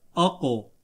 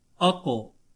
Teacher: अगला हर्फ कलकला भी है, हर्फ मुस्तालिया में भी शामिल होता है, तो इसको मोटा भी पढ़ेंगे, और कलकला भी है, तो इसलिए اس کی آواز لوٹتی ہوئی نکلے گی اور اس میں قلقلہ خوب ظاہر بھی ہوگا